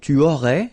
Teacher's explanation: you don't pronounce the final S